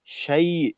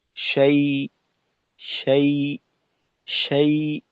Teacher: আওয়াজটা শেষ করার সময় আওয়াজের উচ্চতা একটু বেড়ে যায়। শাই, এটা ভুল।